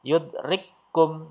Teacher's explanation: Nah, kaf yang sukun ini tidak ada, hilang ya, dihilangkan.